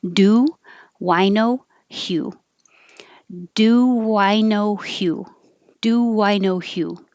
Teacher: it sounds like Hue not who which doesn't have the tongue high